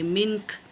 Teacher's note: کاف کو ساکن کریں گے، منک پڑھیں گے